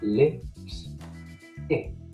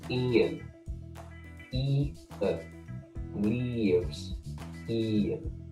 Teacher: In my accent, both of those I sounds are completely flat, no diphthong at all.